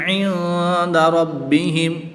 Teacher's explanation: نون ساکن کے بعد حروف اخفا میں سے دال آ رہا ہے تو یہاں پر اخفا یعنی غنہ کر کے پڑھیں گے۔